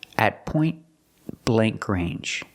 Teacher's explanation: the T in point is between consonants so you don't really hear it it's a stop te but you don't really hear it at